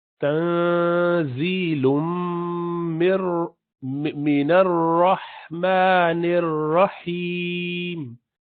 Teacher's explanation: Ra with full mouth, heavy letter.